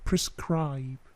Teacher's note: plosifnya sedikit saja, tidak terlalu besar